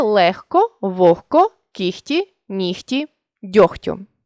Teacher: у цих словах дзвінкий приголосний перед глухим уподібнюється до глухого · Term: уподібнення за глухістю